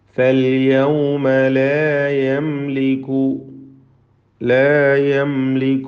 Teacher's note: ഈ പദത്തിലെ സാക്കിന മീം ഇൽഹാർ ഷഫവി നൽകി മണിക്കാതെ വെളിവാക്കണം.